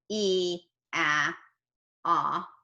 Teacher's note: E, closed all the way front, ah, open all the way, ooh, to the back